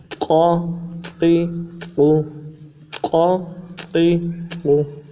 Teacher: قا زبر قا، ایک الف کی مقدار میں کھینچیں گے، قا زبر قا، قا، قا زبر قا۔ گلے کے اندر سے جماؤ کے ساتھ ادا کریں گے اور زبان کا بیچ اٹھائیں گے موٹا کرنے کے لیے